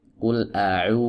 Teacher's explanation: wawu madiyah ini adalah wawu yang berfungsi untuk memanjangkan harokat dhammah sebelumnya. Nah, sebagaimana kita tahu bahwa harokat dhammah ini adalah harokat dengan vokal u, maka wawu yang ada di sini juga vokalnya u, ya, bukan w.